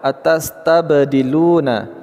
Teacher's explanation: huruf ba sukun pada satu kata, qalqalah sugra. "Lu" kita memanjangkan dua harakat, " dzi" memanjangkan dua harakat.